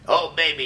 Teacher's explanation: that kind of glottal grind is what that's called